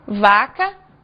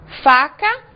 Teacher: nós fazemos exatamente o mesmo movimento e a única diferença é que o som sai com voz e sem voz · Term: sons com voz